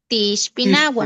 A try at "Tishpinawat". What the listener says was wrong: La T, en los plurales casi no se oyó la T del final. Tishpinawat, an Ishpinawat